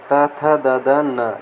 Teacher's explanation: त वर्ग त, थ, द, न, ये दंत यानी दांतों द्वारा उच्चारित होते हैं। दंत से टकराकर ध्वनि उत्पन्न होती है।